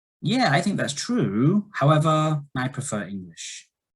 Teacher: So this rise, fall, rise intonation shows that they don't agree fully.